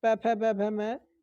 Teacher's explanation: जब आपके दोनों ओठ जब मिलेंगे तभी आप प बोल पाएंगे, फ बोल पाएंगे, ब बोल पाएंगे, भ बोल पाएंगे, मैं बोल पाएंगे। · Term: ओष्ठ्य